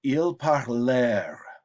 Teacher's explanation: the ent is still silent, typical of a third person verb